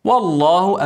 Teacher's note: افخم اللام عشان قبلها فتحه